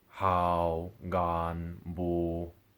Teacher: all of these words need to be said at a lower pitch than what your two tone words would be set at which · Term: number three tones, low tones